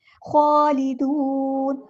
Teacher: خواہ پر کھڑا زبر ہے، ایک الف کے برابر لمبا بھی کرنا ہے اور نون کو ہم ساکن کر دیں گے وقف کرتے ہوئے تو مد عارض بھی ہوگی یہاں پر.